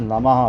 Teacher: विसर्ग का उच्चारण हा के समान होता है।